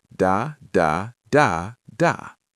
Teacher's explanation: we have 4 syllables. The third one is stressed